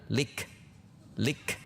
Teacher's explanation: Qobalik sifatnya huruf kaf adalah syiddah. Namun kemudian ada udara setelah tertahan. Lik tertahan ek ada udara lik.